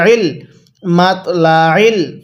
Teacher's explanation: আইনটা পড়ার সময় গলার মধ্যে চাপ দিয়ে অবশ্যই পড়তে হবে তাহলে আইনটা সহি শুদ্ধ উচ্চারণ হবে অন্যথায় আইনটা অনেকে হামজা উচ্চারণ